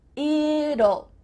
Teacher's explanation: when we say the contraction, it will, we kind of add a little U sound before the L. It kind of sounds like U-L-L.